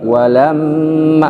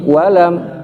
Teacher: Jadi wanya nggak dinaikin. Yang dinaikin adalah lamnya. Walamma bukan walam.